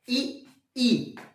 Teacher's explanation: ई और ई बोलते हुए जीभ का अगला भाग प्रयोग हो रहा है, इसलिए ये अग्र स्वर है